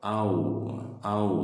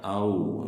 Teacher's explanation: Au ini ada huruf yang sejenis, waw ketemu waw ya. Waw sukun ketemu waw, ini ada huruf yang sama. Ini hukum tajwidnya adalah idgham mutamatsilain ya, idgham mutamatsilain. Jadi dibacanya langsung masukkan huruf yang waw yang kedua. Au jadi diidghamkan.